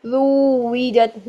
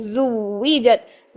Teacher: فوراً زا کو واو ساکن کے ساتھ ملانا ہے